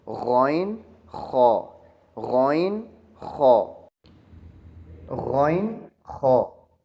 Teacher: یہ دونوں حروف مستعلیہ حروف میں شامل ہیں کہ جن کو موٹا پڑھا جاتا ہے